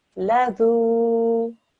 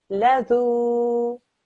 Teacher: Try not to get the Z sound in, okay? The way you're reading it is how an Urdu speaker would pronounce this particular letter.